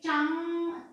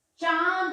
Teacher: नाक और मुंह दोनों से आवाज आई · जो मुंह से हवा होती है वो नासिका और मुख दोनों से निकलती है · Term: अनुनासिक स्वर